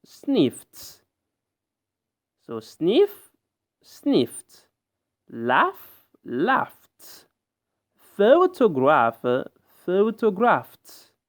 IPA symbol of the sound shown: t